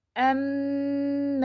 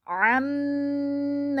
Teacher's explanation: حمزہ ساکن ہوگا تو جھٹکے کے ساتھ پڑھیں گے، اور اگر عین ساکن ہوگا تو نرمی کے ساتھ بغیر جھٹکے کے پڑھیں گے